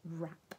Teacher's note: words that had the W and the R, but just made the R sound when you read them